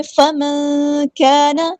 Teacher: نون ساکن کے بعد یہاں پہ چھپا دیں گے، اخفا ہو رہا ہے، ہم 2 کاؤنٹس رکیں گے ، 2 حرکات کے برابر یہاں پہ رکیں گے اخفا کرتے